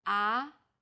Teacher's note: the second tone starts with the middle pitch then Rises quickly